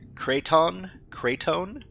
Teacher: French nasal sounding ending.